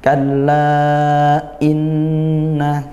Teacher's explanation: Inna nun bertasydid dibaca ghunah dengungkan. · hamzahnya jangan dibaca lemas ya dikuatkan tetap syiddah dia